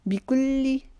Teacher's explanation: لام کو تشدید کی وجہ سے رکاوٹ سے پڑھیں گے